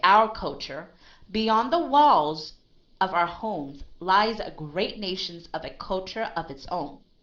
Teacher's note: You notice my stop, the way I stop with the word own. I stop for a long period of time because that is the end of a first statement